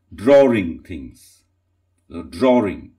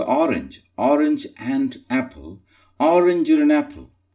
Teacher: that R comes in, intrudes in for the sake of ease in pronunciation.